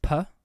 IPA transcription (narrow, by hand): pʰ